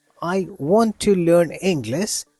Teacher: here we are stressing on want, learn, English. This makes your speech sound more natural. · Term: word stress